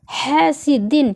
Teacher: ہا کو حلق سے نکالنا ہے سانس کے ساتھ